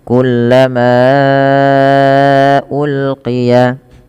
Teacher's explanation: Pada lafal kullama di sini manya dipanjangkan empat atau lima harakat karena adanya mad jaiz munfasil lagi. Sebab terjadinya karena adanya huruf hamzah yang datang karena maaf sebab huruf sebab huruf hamzah yang datang setelah huruf mad.